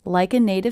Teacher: the stress is big small big small big small